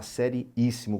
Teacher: sílaba tônica está na antepenúltima Isso aqui é uma proparoxítona